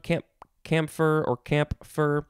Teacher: you can sort of pronounce the p if you want